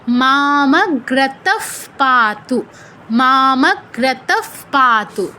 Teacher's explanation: সেই ক্ষেত্রে বিসর্গের উচ্চারণটা করতে হবে ফয় হসন্তর মতো। আর 3টে স্বয়ের যে কোনো একটা যদি থাকে, সেই ক্ষেত্রে বিসর্গের উচ্চারণটা হবে যেই স্বটা আছে সেই স্বয়ের অর্ধ উচ্চারণ, মানে ওই হসন্তযুক্ত আর কি, অটা থাকবে না শেষে।